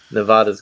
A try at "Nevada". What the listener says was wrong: Nevada. It's Nevada. You say it Nevada. Stop trying to sound. Stop trying to say it in Spanish. It's not Spanish.